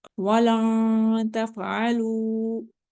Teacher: long इख्फा कर रहे हैं नून के आगे